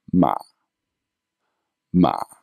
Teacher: Very short, low, but again, not too low. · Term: zombie tone